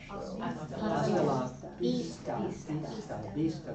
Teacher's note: it's a very soft B sound for both the B and the V